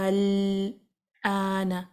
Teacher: الآن، الآن، آپ نے لام کو تھوڑی دیر ہولڈ کرنا ہے تاکہ لام کو باؤنس نہ کیا جائے. سو پہلے آپ نے مد کو 6 کاؤنٹ تک سٹریچ کیا، لام کو ہولڈ کیا